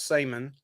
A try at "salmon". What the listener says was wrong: You put the L in there. And nobody else in the whole world does, but here, right in North Carolina, in our area.